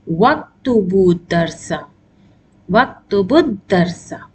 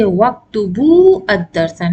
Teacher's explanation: The Hamzatul Wasal gets cancelled